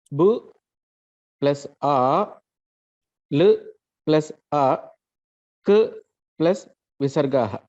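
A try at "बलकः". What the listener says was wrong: K plus A plus Visarga. Okay, you said K plus Visarga aha. K plus A plus aha.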